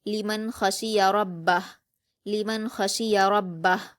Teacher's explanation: बा पर हरकतें जल्द पढ़ेंगे और हा पर उल्टा पेश है तो वफ करते हुए हा साकिन में बदल जाएगा।